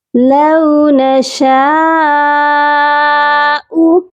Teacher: شین کے ساتھ مد متصل ہے، اس کو کم از کم 3 الف کی مقدار لمبا کر کے پڑھا جائے گا